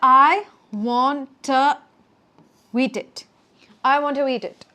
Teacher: So it's not just the want to that's becoming one. It's also the to eat that's becoming one as well.